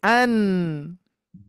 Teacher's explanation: nunnya tidak boleh mantul tidak boleh mantul ketika disukunkan cara bacanya seperti yang tadi an nunnya apa namanya ujung lidah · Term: nun sukun